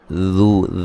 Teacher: ज़ाल को नरम अदा करेंगे, वह मद्दा है।